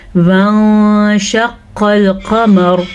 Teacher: جیسا کہ یہاں پہ ہم نے وانشق القمر نہیں پڑھا، ہم نے پڑھا ہے وان، ہم نے نون کو چھپایا ہے، اسی لیے اس کو اخفا کا قاعدہ کہتے ہیں۔ · قاف کو بھی پر پڑھنا ہے اور دونوں قاف جو ہیں یہ پر پڑھے جائیں گے۔ قاف حروف مستعلیہ میں سے ہے۔ · نون ساکن کے بعد شین حروف اخفا میں سے آیا ہوا ہے۔